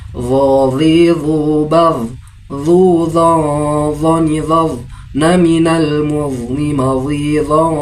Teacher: Huruf dha itu berada pada ujung lidah dengan ujung gigi seri bagian atas, dengan ujung lidah sedikit dikeluarkan dan terbaca tebal